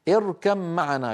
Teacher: اركم معنا كما نراها أمامنا، نجد بأن الباء مجردة من السكون والميم في معنى عليها شدة، فمعنى هذا أن الباء قد أدغمت في الميم فصار النطق بميم مشددة